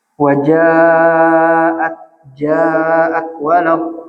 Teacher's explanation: Ketiga huruf ini keluarnya dari jawf. Wajaat, ja'at, walad, dari sini keluarnya, bukan dari khoisyum. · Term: huruf mad